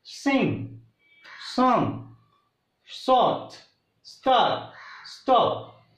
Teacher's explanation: Then we get a correct sound, s and s. Here sing, a little bit whistling sound we hear while producing s sound